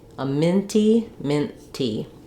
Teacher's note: I can just take my n Sound and let it continue until I get to the tea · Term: unreleased T's